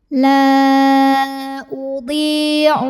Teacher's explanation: dhad yang barisnya kasrah kita panjangkan 2 harokat saja. La udhi'u amala a mad tabi'i.